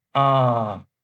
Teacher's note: the first tone from level 5 to 5, and the symbol is a horizontal line